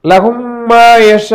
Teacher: லஹும்மா யஷாஊன, லஹும்மா மீம் அருகிலே வந்திருக்கிறது. ஒரு மீமை இரண்டாவது மீமில் இணைத்து விடுகிறோம் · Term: இத்காம் முத்தமாசிலைன்